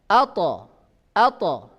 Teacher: Ketika ta sukun maka sama dengan dal, yaitu keluar suara pantulan.